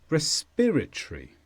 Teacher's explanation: respiratory is an adjective and the stress is on peer